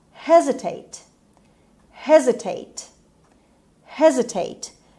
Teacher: The stress is on H, on H sound, and S in this word sound Z. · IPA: /ˈhezɪteɪt/